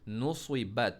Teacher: स्वाद को मोटा पढ़ना है हमने